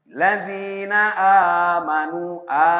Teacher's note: Amanu a dua harakat tidak boleh lebih. Amanu sama mad thobi'i atau mad asli. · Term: mad badal